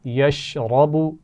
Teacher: یشرب را موٹی پڑھی جائے گی